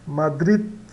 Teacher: No final o D é quase mudo, né? Madrid, né?